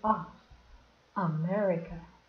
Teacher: Isso aqui é schwa, que é um som a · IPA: ə